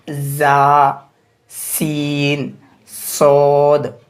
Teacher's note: जब ऊपर नीचे के अगले दोनों दांत आपस में मिले तो इससे ज़ा, सीन, सौद अदा होते हैं। ऊपर नीचे के अगले 2 दांत, जैसे ये दोनों दांत, ये अगर आपस में मिलते हैं तो इससे ज़ा, सीन और सौद अदा होते हैं।